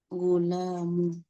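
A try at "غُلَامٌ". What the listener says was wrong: Gulamu, lanya panjang.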